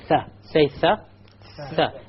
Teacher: Notice the tongue will be outside of the incisors by a millimeter if you like.